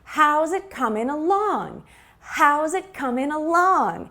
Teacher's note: so we stress the question word how how's it coming along when we have a phrasal verb like to come along or coming along we stress the preposition at the end along